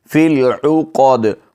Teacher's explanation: دال پر وقف کی حالت میں قلقلہ کیا جائے گا۔ فی العقد، قود آواز واپس لوٹتی ہوئی محسوس ہو۔ · قاف کو موٹا پڑھیں گے اور دال پر وقف کی حالت میں قلقلہ کیا جائے گا۔